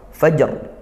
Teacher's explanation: kita sempurnakan qalqalah fajr, mantul langsung setelah itu ro sukun